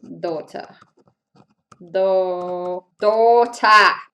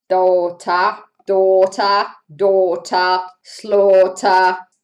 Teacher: the t r ends up becoming an r sound here for me